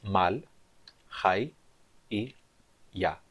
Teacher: A sílaba mal é uma sílaba fechada e átona com uma vogal curta. Então, fechada, átona, curta. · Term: vogal longa